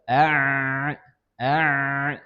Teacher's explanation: Huruf ain tenggorokan bagian tengah.